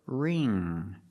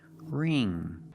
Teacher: And the ng makes the nasal sound. There's no g sound.